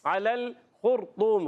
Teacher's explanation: خا ادا ہوتا ہے حلق کے اوپر والے حصے سے